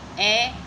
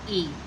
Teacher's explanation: ए का उच्चारण स्थान हुआ कंठ और ई का हुआ तालु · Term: विजातीय स्वर